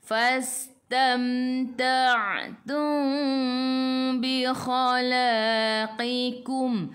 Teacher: Mim bertemu dengan ba ikhfa syafawi. Ikhfa syafawi kena dengung dua harakat. Nak rapatkan bibir boleh, tapi jangan tekan.